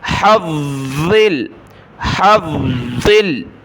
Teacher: ہا کو گلے سے نکالیں